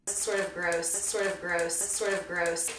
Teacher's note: I made a flap T out of the T in sort of. This is because it comes after an R before a vowel sound. Sort of. We'll want to link the D to the next word, which begins with a vowel, sort of, so it sounds more like one word than two separate units.